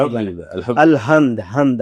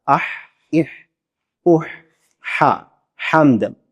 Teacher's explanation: ہا یہ گلے کے جو ہے نا وہ آخری حصے سے ادا ہوتی ہے، اور ہا جو میٹھی ہا ہے، حمد والی ہا ہے، وہ گلے کے درمیان سے ادا ہوتی ہے